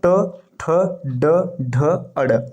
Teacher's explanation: ट ठ ड ढ अड़ ये मूर्धन्य होता है